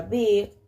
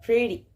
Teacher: una vocal medio cerrada, medio central, que se emite sin redondear los labios. Su ortografía más común es E, como en la palabra big, o E, como en la palabra pretty.